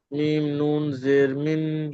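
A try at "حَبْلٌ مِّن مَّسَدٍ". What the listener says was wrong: না, মিম নিমজের করলে হবে না এখানে, সাকিন আর তাজদিদ পরস্পর এসছে, তাহলে তাজদিদ কি ধরতে হবে? মিম, মিম জের মিম, না, ওকে ধরা হবে না আর, কারণ সাকিন আর তাজদিদ পরস্পর এলে সাকিনকে মানে পড়ার হয় না সেখানে, ডাইরেক্ট তাজদিদ যে অক্ষর আছে তাকে ধরতে হবে।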